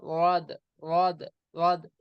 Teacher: जीभ के किनारे को दाढ़ से लगाएंगे तो वाद निकलता है